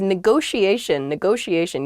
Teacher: neither t is a hard t they're both very soft that sh sound